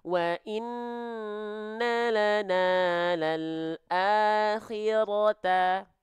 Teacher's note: Kenapa? Karena huruf ro itu adalah huruf yang harus dibaca tebal ketika dia berharokat fathah. Maka dia condong akan terdengar seperti vokal O.